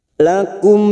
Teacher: mim sukun bertemu qa, namanya idhar safawi, kita baca jelas tanpa mendengung